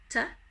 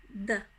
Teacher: So you can see the tongue a little bit with D between the teeth, but we're not spitting and we're not blowing out any air like we do in English